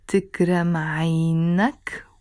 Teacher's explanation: with the ak sound in the end, if you're talking to a man.